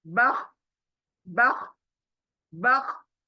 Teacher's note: खर खर खर होता है हलक के ऊपर, वहीं से ये ख निकलेगा